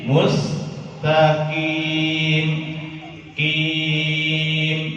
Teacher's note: Kemudian qaf ketika kasroh maka ketebalannya turun menjadi 50. Ketebalan qaf ketika kasroh itu tinggal 50%.